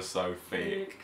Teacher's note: We might even say thick (pronounced fick)